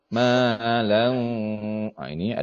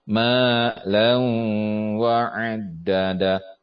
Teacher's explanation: fathatain bertemu dengan wa idgham bil gunnah, harus gunnah ditahan 3 harokat.